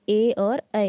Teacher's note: ए और ऐ का जो उच्चारण है वो कंठ तालु से होता है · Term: कंठ तालव्य वर्ण